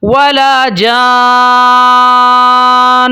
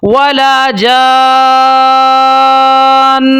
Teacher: جب میں وقف کرتا ہوں تو ہم نے غنہ پھر بھی کرنا ہوتا ہے نون مشدد کے اوپر، چاہے نون مشدد کے اوپر وقف ہو یا نہ ہو، دونوں صورتوں میں غنہ لازمی کرنا پڑتا ہے۔